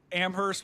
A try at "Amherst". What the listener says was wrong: It's Amherst. Don't pronounce the H.